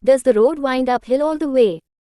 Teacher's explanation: The syllable, does, is followed by an unstressed syllable which is the. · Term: Trochaic meter